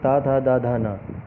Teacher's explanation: ता वर्ग ये दांतों से मिलाकर, जीभ दांतों से मिलाकर ये आवाज़ें निकालती है, उनको दंत व्यंजन कहते हैं।